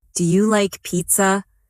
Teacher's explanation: Make sure your voice rises at the end.